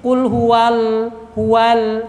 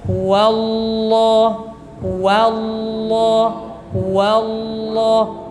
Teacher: setelah wa jadi tidak begini Qul hualal hualal tidak seperti itu ketika wa lepas ke Lam sudah tebal